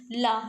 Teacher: जब हम ला को बोले तो हमारी जीभ जो है हमारे दांतों से, दंत से जो है टच हो रही है, तो कौन सी है ये, हमारी ला दंत्य ध्वनि है, ठीक है।